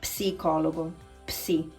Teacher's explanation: you don't pronounce the P, but in Italian, you have to pronounce it